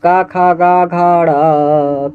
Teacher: क ख ग घड़ कंठ से आवाज आता है